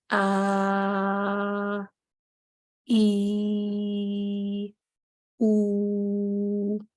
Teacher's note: اس میں دو organs of speech آپس میں نہیں ٹکرا رہے اور میری آواز آرام سے نکل رہی ہے، گلے سے باہر آ رہی ہے. تو ہم اس کو کہیں گے کہ مخرج مقدر ہے.